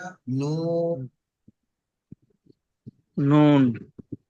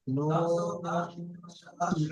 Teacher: নুনের উপর এক নক্তা, নুনকে তিনালি পরিমাণ টান দিয়ে পড়তে হবে।